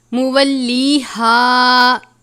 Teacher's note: یہ گول والی ہا ہے، حلق کے آخر سے ادا کرتے ہیں